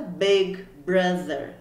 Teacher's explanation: O I com som de E, o O com som de E e o TH, que é esses, né? Parece um Z, mas ele é entre os dentes, então é um som também que pra gente é bastante desafiador